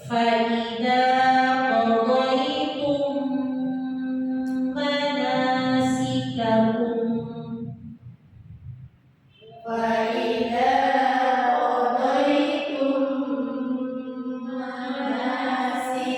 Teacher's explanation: Mimnya itu dibaca disertai dengan gunna. Ada di tangan dua harokat, ya. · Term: idgham mislain